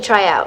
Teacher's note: the consonant blend TR will sound like a combination of CH sound with the letter R. In this way, the word TRY will not sound like try, but try.